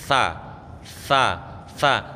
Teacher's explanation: Tha pucuknya lidah niku nempel kepada pucuknya gigi kelinci yang atas.